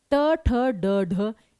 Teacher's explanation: जीब मुड़ गई तो मुर्धन्य